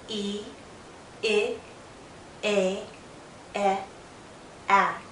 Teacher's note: as I say these front vowels, as my mouth opens, my jaw lowers.